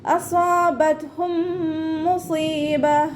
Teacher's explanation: അപ്പോൾ നമ്മൾ നേരത്തെ പറഞ്ഞ പോലെ കെസ്രയാവുന്ന സമയത്ത് നമ്മൾ നാവിൻ്റെ മുഴുവൻ ഭാഗങ്ങളും മുകളിലേക്ക് ഉയർത്തിയിട്ട് തഫ്രീം ചെയ്യുക കേട്ടോ